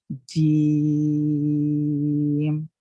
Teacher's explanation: جو زبان کا درمیان والا جو حصہ ہوتا ہے نا، اوپر کے سخت تالو سے جا کے لگتا ہے، درمیان والا حصہ ہے، تب یہ ہمارا جیم ادا ہوتا ہے.